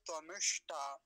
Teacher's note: इसमें मूर्धन्य सकार भी है उसको अच्छे से बोलेंगे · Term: मूर्धन्य शकार